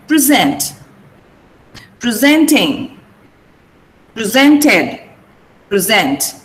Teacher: You have to stress sent.